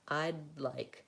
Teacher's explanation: That may seem harder at first because you're trying to do two sounds with one tongue movement, but it does flow more easily, and it actually becomes easier because the D and the L are in a similar tongue position · But basically what I do is when I move up to saying I don't release the D. I don't say I'd with the release. I'd release right into the next word. So I'd like, I leave my tongue up for I'd, and I move right into like.